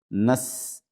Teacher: سین میں سیٹی کی باریک سیٹی کی آواز آئے گی